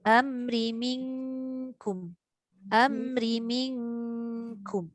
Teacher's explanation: Dia pergi hampir dekat tempat keluar kaf lah belakang. Jangan bunyi tebal pula. Kaf ni huruf nipis. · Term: nun bertemu kaf